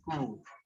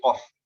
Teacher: Kaf ketika doma tipis, ku, suaranya keluar semua, ku, nggak ngumpul bergema, kalau itu bergema suaranya, jadi kof.